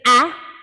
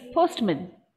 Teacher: short vowel ah became a schwa